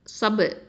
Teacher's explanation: இந்த ப சுக்கூனுக்கு கல்கலத்து சுகரா கொடுக்கணும்.